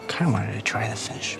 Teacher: he actually drops that first pronoun I. He doesn't say it. He starts with kinda.